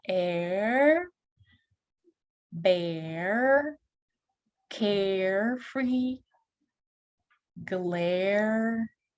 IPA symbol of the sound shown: ɛr